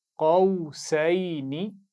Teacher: शुरू में क़ाफ को मोटा पढ़ना है · आखिर में नून को लंबा नहीं करेंगे